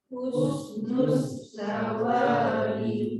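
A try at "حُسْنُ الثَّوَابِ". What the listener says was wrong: Belum keluar. Hus lidah dalam, nus lidah keluar. Husnus sawabi.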